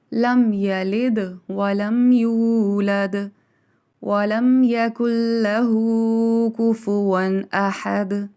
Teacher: تمام جو دال ہیں جس پہ وقف ہو رہا ہے ان کو قلقلہ کیا جائے گا کیونکہ حروف قلقلہ ہیں، ہلا کے ادا کیا جائے گا.